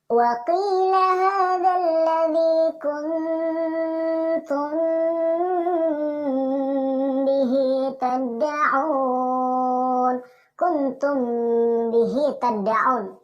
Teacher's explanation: Seolah-olah kita ingin menyebut huruf ba, namun kita tahan dan penyebutan huruf ba tidak diucapkan secara sempurna. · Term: ikhfa syafawi